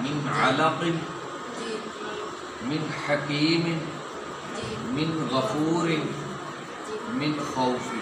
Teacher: حلق سے ادا ہونے والے. نون ساکن کے بعد یہ حروف اظہار یا حروف حلقی آ جائیں تو نون کو ظاہر کر کے پڑھیں گے ان 6 حروف کی وجہ سے.